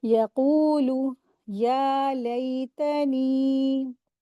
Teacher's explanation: या को 2 हरकत खींचेंगे, नून को भी 2 हरकत खींचेंगे